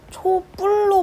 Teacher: 비읍이 쌍비읍으로 된 소리가 되죠.